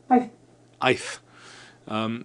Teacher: the I with just the beginning of a th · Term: soft th sound